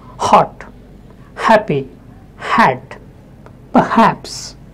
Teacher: The next is a glottal fricative sound, H